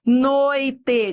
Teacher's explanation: vai do forte pro fraco, decrescente.